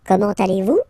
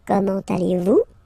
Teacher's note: it's a question, so raise a little bit your voice at the end